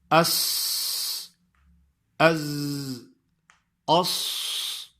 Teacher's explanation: سین اور زا کی آواز جب نکلتی ہے مخرج سے تو ان کی آواز سے ایک سیٹی سی آواز آتی ہے، یعنی سیٹی جیسے بجتی ہے اس طرح ان کی آواز آتی ہے۔ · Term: صفیریہ